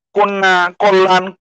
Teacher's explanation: কন্যা বানানের দন্তন্যটার সাথে জফলা ছিল শেষের দিকে, জফলাটা ওইটা থাকার কারণে দন্তন্যটা 2 বার হলো। কন্যা, কল্যাণ, ল, 2টা ল, লয় ল।